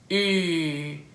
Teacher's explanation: Say E with your lips in a oo position, you get U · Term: mixed vowel